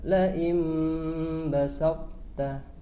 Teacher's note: makhrajnya to sukun harus tetap ada, akan tetapi sifat qalqalahnya hilang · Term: idgham nakis